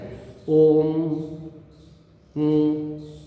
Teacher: ओम ऐसे म निकलता है नाक में से अनुनासिक है ना म तो होठ बंद करके नाक में से जो आवाज निकलेगी उसका नाम म है